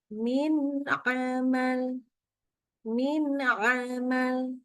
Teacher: Ada min ketemu dengan amalin. Maka dibaca normal nunnya. Jelas ya. Terang. Nggak pakai dengung.